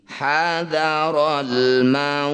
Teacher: Hadaral mauti, ketika berhenti hadaral maut. Nah, tak sukun ini punya sifat namanya hamas, jadi harus mengeluarkan percikan udara dari lisan ketika baca tak sukun.